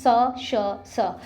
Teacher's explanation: जो ऊष्म व्यंजन होते हैं स, श, स, इसमें क्या होता है, एक घर्षण उत्पन्न होता है